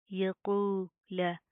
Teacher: कॉफ को प्रॉपर मुंह को पूर करके पढ़ेंगे, मोटा पढ़ा जाएगा